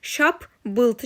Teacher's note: Amma şapıltı sözü tələffüz zaman birinci P qalır, ikinci P B-ya keçir. Yəni şap bıltı kimi tələffüz olunur.